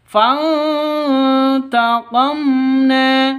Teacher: Fantaqamna, mim mati bertemu dengan nun, jelas terang karena bacaan izhar safawi, hukum mim mati.